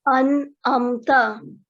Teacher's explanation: नून साकिन की आवाज को गुन्ना की तरह अदा नहीं करते, बल्कि 1 सेकंड के लिए साफ और वाज़ेह अदा करते हैं